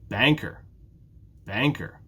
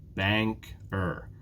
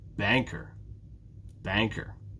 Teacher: banker has two syllables bank er and it's the first syllable that's stressed